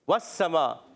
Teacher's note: वाव की अदायगी होगी होंठों की गोलाई से